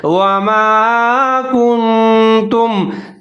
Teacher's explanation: काफ और नून को मिला के पढ़ेंगे, थोड़ा सा गुन्ना करेंगे क्योंकि आगे हुरूफ अख्फा आ रहा है